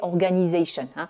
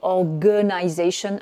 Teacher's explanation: Donc là, on est sur organization avec le G là, le premier A c'est le son schwa